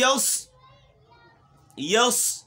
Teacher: صاد موٹا پڑھنا ہے، سیٹی کی آواز بھی